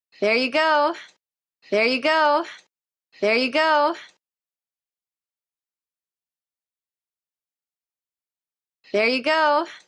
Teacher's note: try to do it really smoothly connected with that peak of stress on go